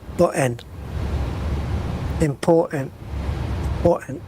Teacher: important and button, both words have got two T's in them. And they're both missing.